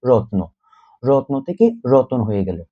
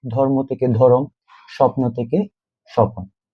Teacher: আচ্ছা, এখানে একটা ইম্পর্টেন্ট বিষয় হচ্ছে, এই যে রত্ন, রত্ন থেকে রতন হওয়ার সময় স্বর অ উচ্চারণ হচ্ছে রতন। অর্থাৎ মধ্য জায়গায় আমরা স্বরধ্বনি যুক্ত করেছি, অর্থাৎ স্বরধ্বনির মতো উচ্চারণ হচ্ছে। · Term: মধ্য স্বরাগম